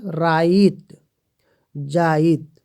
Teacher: इकर व्यवहार मात्रा रूप से बेसी वर्ण रूप में होएला, जे के अपनी हिति कर विशेषता कहल जाएला, जैसे राइत जाइत। दोस्तों यहाँ पर रात को राइत कहा गया है और जात को जाइत कहा गया है